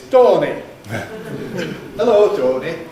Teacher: In local Lanasher pronunciation, his name is Dorny. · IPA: [ˈtoːni]